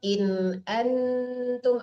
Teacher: jangan ditahan tidak ada dengung di situ itu. Izhar